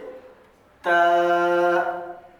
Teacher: زبان کی نوک اور اوپر کے دانتوں کے اندرونی حصے سے